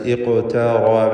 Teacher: അപ്പോൾ ഖാഫിനും റാഇനും മാത്രമാണ് ഈ പദത്തിൽ തഫ്ഖീമുള്ളത് എന്നത് ശ്രദ്ധിക്കുക.